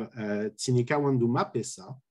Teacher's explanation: you have the tone of the verb that shifts up to the object money uh the first syllable the prefix through the word one do · And if you take a look at the pitch track, you see that clearly the high tone is on the ma here and on the sa, but there is nothing on wandu that is high in this case